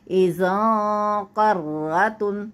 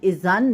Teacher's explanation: تو یہاں پہ چونکہ آگے والا حرف حروف حلقی نہیں ہے تو نون ہمارا جو وہ نون کا ساؤنڈ ہے وہ چھپ جائے گا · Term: اخفا